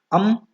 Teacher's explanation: ಎರಡು ತುಟಿಗಳು ಸೇರಿ ಬರ್ತದೆ ಮತ್ತು ಕಂಠದಿಂದ ಅದರ ಉಚ್ಚಾರಣೆ ಆಗ್ತದೆ. ಸೊ ಆದ್ದರಿಂದ ಇವನ್ನ ನಾವು ಕಂಠನಾಸಿಕ ಅಕ್ಷರಗಳು ಅಂತ ಕರಿತೇವೆ. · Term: ಅನುಸ್ವಾರ